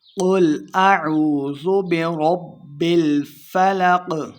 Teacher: قاف کو موٹا پڑھیں گے